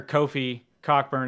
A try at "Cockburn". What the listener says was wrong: It's Coburn. Yeah, that you pronounce it Coburn, apparently. The CK is silent.